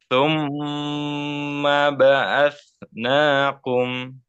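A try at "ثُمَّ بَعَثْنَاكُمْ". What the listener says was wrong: Kum jangan ada jangan tebal lah. Kum, kum, kum, kum.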